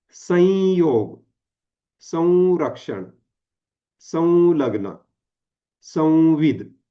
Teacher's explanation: त्याचा उच्चार कसा झालेला आहे नुसता नाकातून झालेला आहे त्यासाठी जीभ कुठेही टेकलेली नाहीये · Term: अनुस्वार